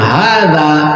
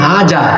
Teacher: জিহ্বার আগাকে দাঁতের আগায় লাগিয়ে হয়, কিন্তু আপনি বাংলা দেখে পড়ছেন হাজা।